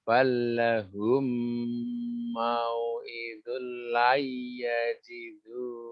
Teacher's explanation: Mau'idul tanwin bertemu lam bukan idgham bi gunnah tapi bila gunnah. Enggak boleh ditahan.